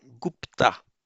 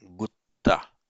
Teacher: And by regular phonetic mutation, this consonant cluster pt in Sanskrit becomes a double t in Pali. That's how we get gutta.